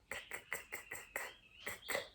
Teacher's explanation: Você também não usa corda vocal, é só k, k.